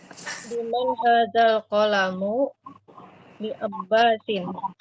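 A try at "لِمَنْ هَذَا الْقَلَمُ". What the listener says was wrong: Enggak, udah benar liman hadzal qalamu. Udah benar tuh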